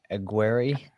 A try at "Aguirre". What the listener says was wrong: Aguirre. We're not rolling our R's.